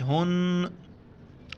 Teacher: نون کے اوپر بھی یہ 3 دانت والا ہے وہاں پر ہمیں غنہ کرنا ہے ناک میں آواز چھپانی ہے.